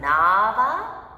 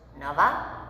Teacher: spelled exactly the same way but pronounced with a slight difference in the vowel duration makes it a whole new word